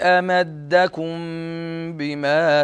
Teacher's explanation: الميم الساكنة قبل حرف الباء، فهذا يسمى بالإخفاء الشفوي، فنسميه الإخفاء الشفوي تفرقة بينه وبين الإخفاء الحقيقي.